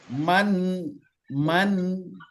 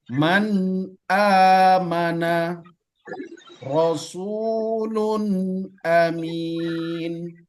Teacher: huruf nunnya dengan tidak menimbulkan dengung atau gunah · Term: izhar halqi